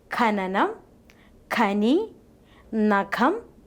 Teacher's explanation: The first letter is Kha. While producing this sound, the back of tongue presses against the soft palate. The plosion takes place with the extra puff of air. Soft palate is raised to prevent the entry of air into the nasal cavity. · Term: aspirated form of Ka